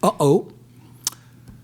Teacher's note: the apostrophe is not for decoration it's a glottal stop it's a real consonant